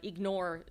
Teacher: Sophomore. Ignore, the last syllable is the strong one